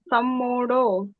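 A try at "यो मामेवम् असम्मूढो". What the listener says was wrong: ತಮ್ಮೂಡ ಹೇಳಬೇಡಿ ಮಾತಾಜಿ ಮಾಮೇವ ಮಸಮೂಡ ಮ ಸೇರಕೊಂಡು ಹೇಳಬೇಕು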